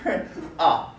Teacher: ah is low and kind of in the middle the tongue is just ah how about another vowel give me